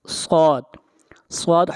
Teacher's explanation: صاد حروف مستعلیہ میں سے ہے، صاد کو موٹا پڑھا جائے گا